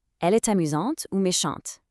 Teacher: Based on the sound and spelling of these adjectives, both amusante and méchante ending with that sharp, activated T